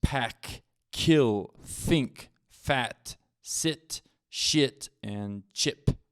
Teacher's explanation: if you put your hand on your voice box and you say these sounds you cannot hear your voice vibrate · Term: voiceless sounds